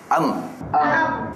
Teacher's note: Dia tersekat menunjukkan makhrajnya di hidung. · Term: dengung